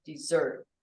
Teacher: the accent is on the second syllable dessert